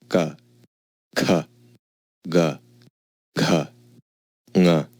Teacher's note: ka, kha, ga, gha, nga, Notice the order of terms here. The first 2 are unvoiced, and the rest are voiced, the second and fourth are aspirated, and the rest are unaspirated, and the last consonant is a nasal. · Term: Soft palate consonants